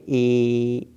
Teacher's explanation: ए मतलब होंठ जो है फैल गया, मुंह जो है हल्का सा पिचक गया और जीभ जो है स्थिति जो है बीच में हो जाती है। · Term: अर्ध संवृत्त